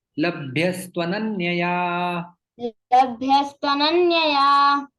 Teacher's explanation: विसर्ग जो है वो स में परिवर्तित हो जाता है और यण संधि होती है, तू का उकार चला जाता है और वो लग जाता है वहां पर।